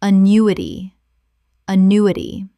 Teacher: 4 syllables with the stress on the second.